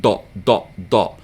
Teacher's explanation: the pitch is lower and also you're pronouncing the d a little bit more deeply in your throat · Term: emphatic counterpart